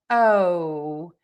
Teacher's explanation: in English, we have this very long O vowel. And our mouth moves more for this vowel than it does in many other languages for the O sound. And so think about moving your mouth O and making that sound longer.